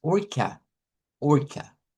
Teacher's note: Vea, si yo digo esta palabra orca y abro así la boca a, estoy usando la del español. Vea, debo de usar el schwa en este caso, que es orca.